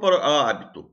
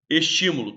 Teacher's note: A sílaba tônica é antepenúltima, é terceira de trás para frente. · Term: proparoxítono